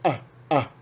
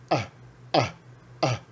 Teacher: ela é pronunciada como uma parada glotal